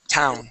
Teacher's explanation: see how my tongue is touching I'm not touching my teeth I'm touching the top of my mouth